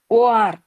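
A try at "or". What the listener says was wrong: Very good. 2 అక్షరాల ఆర్ అంటే ఓఆర్.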